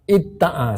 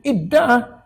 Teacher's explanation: Mana ada ta, tak ada langsung ta kan? Maknanya ta tu telah ditukar kepada dal. Kemudian idgham. Sebab makhraj dia sama. Da, ta, hampir dekat-dekat kan?